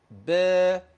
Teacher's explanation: الفتحة، الفتحة لو أنا قلت با، ده مد طبيعي، كم حركة؟ حركتين